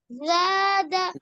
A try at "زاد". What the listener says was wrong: دا میں سختی ہوگی, نہیں معلوم ہے کیا؟ دا کو سختی سے پڑھتے ہیں.